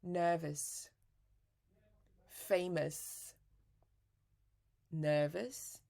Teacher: that's the sound of schwa. It's not stressed. It's relaxed. Your mouth is very relaxed